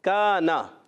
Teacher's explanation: کاف کو کھینچیں گے نون کو نہیں کھینچیں گے